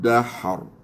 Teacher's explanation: Ra di sini tebal sebab yang mematikan dia tu berbari fathah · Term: tebalkan ra